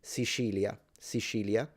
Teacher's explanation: Sicilians in my area, so kind of northwest tend to pronounce the C in this position position as a sh.